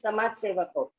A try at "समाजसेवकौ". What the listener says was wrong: Samaj, not Samaj Sevaka. Samaja Sevaka. Not, this is not Hindi. Not Samaj. Samaja Sevaka. One word. Samaja Sevaka. You are saying Samaj only. Samaja Sevaka.